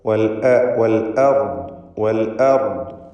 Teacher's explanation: അർദ് എന്ന പദത്തിൽ റാഇനും ദ്വാദിനും തഫ്ഖീം കൊടുക്കണം, തടിപ്പിച്ചുച്ചരിക്കണം. ഹംസക്ക് തഫ്ഖീം വരാതെ ശ്രദ്ധിക്കുക.